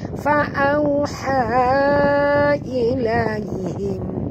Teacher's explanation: Ilaihim, di sini ha simpul, ya, jadi jaga bunyi dia keluar berhalkum. Mim mati bertemu dengan hamzah, tak boleh dengung, izhar syafawi. · kita kena sorokkan bunyi nun ini ke dalam huruf sin disertai dengung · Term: ikhfa haqiqi